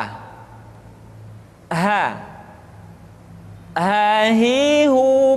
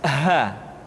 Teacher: dikeluarkan dari tenggorokan yang terjauh sama seperti kita mengucapkan huruf a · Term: huruf H